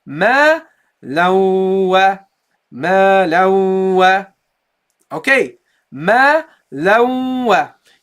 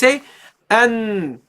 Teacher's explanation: You will feel a vibration, guys. You will feel a vibration in the nose. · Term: ghunnah